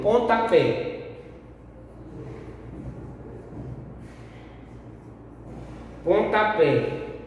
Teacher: Pontapé, a sílaba tônica é a última, pé. Então ela é uma palavra oxítona.